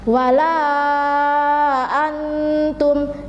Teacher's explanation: membacanya itu harus panjang dua setengah Alif atau lima harokat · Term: Jaiz munfashil